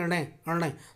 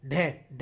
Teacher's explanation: जिनके उच्चारण में जीव पहले ऊपर उठकर मूर्धा को स्पर्श स्पर्श करें और दोस्तों फिर झटके के साथ नीचे आए उसी को हम उत्क्षिप्त वर्ण कहते हैं उत्क्षिप्त वर्ण जो होते